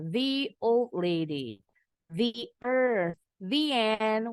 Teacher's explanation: Kalau the diikuti dengan kata berawalan huruf vokal A, I, U, E, O, the bunyinya jadi they.